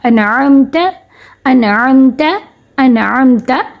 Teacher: ان نون کی آواز آئی، حمزہ نون زبر ان. ٹھیک ہے، نون کی آواز آئی لیکن ہم نے غنہ نہیں کیا · ہم نے نون ساکن کے بعد کیونکہ عین آیا، نون ساکن پہ بغیر غنے کے نون کی آواز کو ظاہر کر دیا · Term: اظہار